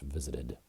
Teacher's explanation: I'm pronouncing this in American English, visited, with a D sound instead of a T.